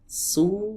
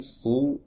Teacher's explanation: tenggorokan terasa menyempit teman-teman saat kita mengucapkan huruf shad ya berbeda dengan huruf Sin su biasa saja tapi su ah ini agak menyempit di sini ya di tenggorokan.